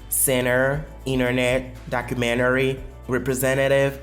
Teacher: Si la partie de ce mot-là n'est pas stress, n'est pas accentuée, le mot est englouti, le T, excusez-moi, est englouti comme absent de la prononciation.